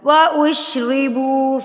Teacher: بو کو بھی کھینچیں گے کیونکہ با کے بعد واؤ پیش کے بعد واؤ ساکن ہے، تو یہ بھی حروف مدہ ہے، اس کو ہم کھینچیں گے ایک حرکت کے برابر۔